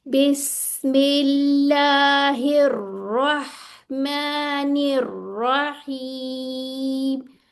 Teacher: इसमें तकरीर होती है, यानी कि वाइब्रेशन होती है, हमें ज़बान में फील होती है।